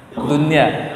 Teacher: Kata Pak Waktu tadi dunia tidak dengung. Karena nun sukun bertemu dengan ya dalam satu kata, maka tidak dengung dia.